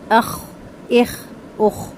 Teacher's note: खरखराहट के साथ पढ़ा जाएगा। · پھر خا ہے، خرخراہٹ کے ساتھ پڑھا جائے گا، اخ، اخ، اخ۔